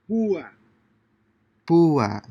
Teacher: Since these words have a written accent over the letter U, the diphthong is broken and the two vowels are pronounced separately.